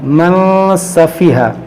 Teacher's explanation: یہاں پر اخفا کا قاعدہ لگائیں گے، ناک میں آواز لے آئیں گے،